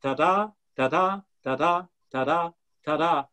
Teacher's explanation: each stress is followed by an unstressed syllable